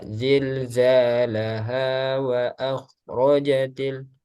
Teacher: Nah, khusus untuk mat tabi'i atau mat asli ketika dia nggak ada sebab sebab mat far'i ya, hamzah atau sukun, maka dia selalu dua harokat. Nah, meskipun ketika diwakofkan laha tetap dua harokat. Jadi ketika wasol, ketika wakof, mat tabi'i atau mat asli dia nggak berubah.